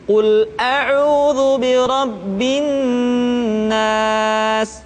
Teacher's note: Tidak boleh dibaca Qul a'udzu birabbin nas, tetapi ditahan suaranya ketika mengucapkan nun tasydid